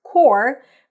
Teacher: core, like the Peace Corps, is pronounced without the P and without the S